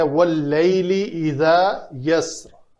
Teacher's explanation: اس را کے نیچے کسرہ ہے، ہم نے یہاں پہ وقف کرنا ہے تو اس کسرہ کو نہیں پڑھیں گے